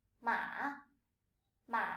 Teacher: It starts lower than the 2nd tone, dips a little, and rises up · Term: 3rd tone